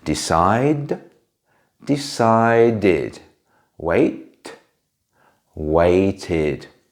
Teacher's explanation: if a verb already ends in a t or a d sound, we still add the letters ed, but in this case we pronounce it like id